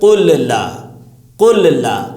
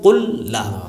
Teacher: تو دو مرتبہ زبان کو لام بولنا پڑتا ہے، لام کے مخرج پہ جانا پڑتا ہے. تو آسانی کے لیے کیا کہ پہلے والے لام کو سائلنٹ، دوسرے والے پہ تشدید ملا کے بول دیا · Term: ادغام